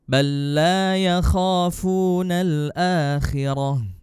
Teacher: Tidak boleh ada dengung di idgham mutamatsilain ini.